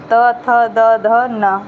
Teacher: दंत से। जब आप बोलेंगे तो ना आपका जीभ जो है दांत को टच करेगा।